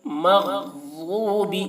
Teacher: مغضوب میں غین ضاد دونوں کو پر ، مغضوب علیہم، عین کو حلق سے ادا کریں گے، علیہم